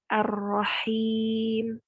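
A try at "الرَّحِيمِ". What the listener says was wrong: Bukan Rahim. Rahim. Kalau kita baca Rahim, itu kita menambahkan tasydid di ha. La nuridu ziyadah. Kita nggak mau ditambah. Ar-Rahmanir-Rahim. Rahim.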